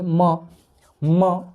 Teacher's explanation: ओठ ओठ सट रहा है तो म जो है वो ओस्ट से बोला जाएगा